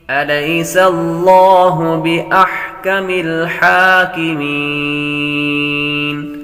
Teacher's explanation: لفظ اللہ کے لام سے پہلے حرف پر زبر ہو تو لفظ اللہ کے لام کو پر پڑھتے ہیں.